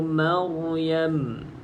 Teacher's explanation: ra sebelumnya berbaris di atas, maka baca dengan bacaan yang tebal.